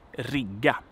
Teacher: Short vowel, long consonant.